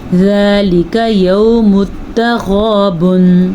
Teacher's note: غین جو ہے حلق کے پہلے حصے سے نکلتا ہے تو اس کو ہم پر پڑھیں گے